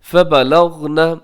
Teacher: یہاں غین کو کلکلا ہونے سے بچائیے گا